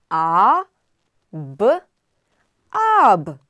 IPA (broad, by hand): ɒ